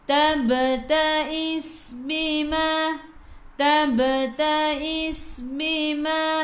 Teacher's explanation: Okey, sin ada sukun masuk ke dalam sin, dan ingat huruf sin sifat hurufnya safir, kena bunyikan